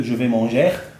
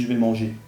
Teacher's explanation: Le phonème ER à la fin d'un verbe, ça se dit et.